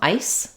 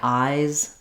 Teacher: the S is strong in ice and the vowel is short the Z is weak in eyes and the vowel is long · when I'm saying eyes I hold that longer than if I say ice the before of voiced sound we hold the vow sound longer